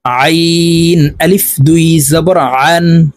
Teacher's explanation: আইন হরফকে হলকের মধ্যখান থেকে দিয়ে উচ্চারণ করতে হবে কারণ আইনের মাখরাজ হলকের মধ্যখান থেকে হবে আমরা অনেকে এই আইন